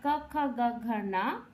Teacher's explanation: ये क वर्ग कंठ से उच्चारण होता है